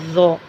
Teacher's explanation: اسے موٹا پڑھا جاتا ہے اور اونچا پڑھا جاتا ہے ذو، لیکن اس کے لیے منہ کو گول نہیں کیا جاتا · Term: حرف ذو